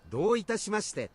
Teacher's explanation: That don't sound correct. It sounds like he's missing a couple of syllables there.